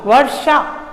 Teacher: जब हमने शा बोला वर्षा तो हमारी जीभ ने तालवे से भी आगे का जो स्थान होता है वहां स्पर्श किया।